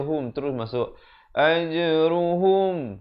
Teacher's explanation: Lahum izhar syafawi, jangan panjang. Bunyi saja hum terus masuk ajruhum.